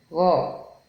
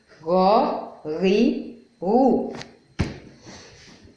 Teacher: The sound is coming from your middle throat, ro, almost raising the tip of your tongue almost to the roof of your mouth. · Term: goin